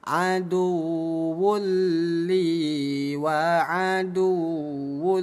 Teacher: Bunyi tanwin kita leburkan ke huruf lam yang tadinya dibaca aduwun li menjadi aduwul liol nol harakat dibaca lebur. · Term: idgham bila ghunah